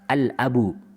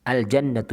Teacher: Ada alif lam yang bertemu dengan huruf-huruf qamariyah, dibaca dengan jelas, idhar.